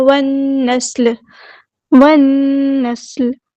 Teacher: وَالنَّسْلِ، وَالنَّسْلِ، ہم نے واو کو نون کے ساتھ ملا دینا، حمزۃ الوصل ڈراپ ہو جائے گا. لام یہاں پہ لام شمسیہ ہے، اس کو ہم ظاہر نہیں کریں گے. اور نون پہ غنہ زمانی اور 2 کاؤنٹ رکھیں گے. سین میں ہم اس کی صرف شو کریں گے، لام کو ہم ساکن کر دیں گے، ہم یہاں پہ وقف کریں گے.